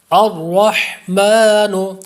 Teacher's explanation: الرحمن پر جو را ہے اس کو پر کریں گے، موٹا کریں گے